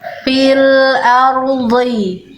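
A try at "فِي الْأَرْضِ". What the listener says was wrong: Jangan lepas dotnya. Rohnya diindahkan bagus, dotnya jangan dilepas, ya.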